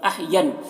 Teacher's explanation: نون مشدد ہے، غنہ کے ساتھ میں پڑھیں گے